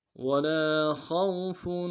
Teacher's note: لام کے ساتھ الف مدہ ہے، ایک مقدار میں کھینچیں گے، خا کو واو کے ساتھ ملانا ہے، خا کو موٹا ادا کریں گے ، واو لین بغیر کھینچے پڑیں گے، فا کے اوپر تنوین · خوف، واو کے ساتھ واو کو نم سے ادا کریں گے، لام کے ساتھ الف مدہ ہے، ایک مقدار میں کھینچیں گے ، خا کو واو کے ساتھ ملانا ہے، خا کو موٹا